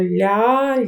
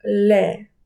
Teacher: французи вимовляють звук л напівтвердим, вимовляють його кончиком язика